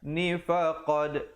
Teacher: ada qalqalah sughra di situ, berikan pantulan